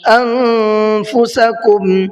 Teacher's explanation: نون ساکن کے بعد میں فا ہے، یہاں پر بھی اخفا ہی کا قاعدہ ہے، فا بھی حروف اخفا میں سے ایک حرف ہے اور نون ساکن کے بعد میں آ رہا ہے۔